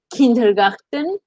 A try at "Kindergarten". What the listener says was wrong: No, disculpa, no tienes que hacer tan gutural la R. No es tan gutural, okay, como en el francés, no.